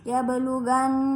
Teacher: Tetapi sedang selanjutnya itu gunnah, di mana di sini terdapat huruf nun di tasydid. Terus cara membacanya itu huruf nun di tasydid kemudian didengungkan antara 2 sampai 3 harakat